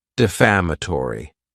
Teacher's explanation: this word has five syllables and the stress is on that second syllable